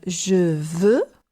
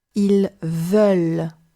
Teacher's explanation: Okay, so here, just notice that you have exactly like the close and open O, we have a close and open E. We have je veux, closed E. Ils veulent, open E.